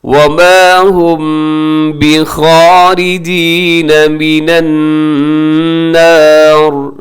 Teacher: نون مشدد ہے، یہاں غنہ کیجیے گا، اور آخر میں را جو ہے اگر ملا کے پڑھیں گے نیکسٹ آیت کے ساتھ تو پھر تو را باریک ہوگی، لیکن وقف کریں گے تو را ساکن ہوگی.